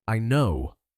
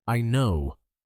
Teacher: Notice that Monica's I know is very short, fast, and high energy. She doesn't say I know. · She says I know with a quick rise in tone.